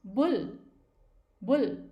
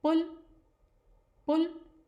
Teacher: जब हम बुल बोलते हैं तो हमारे लिप्स बिल्कुल स्ट्रेट रहते हैं, फिक्स रहते हैं, और जब हम पुल कहते हैं तो हमारे लिप्स अंदर की तरफ जाते हैं